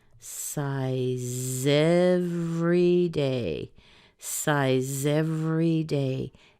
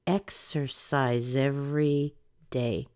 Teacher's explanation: let's push the Z sound over into the every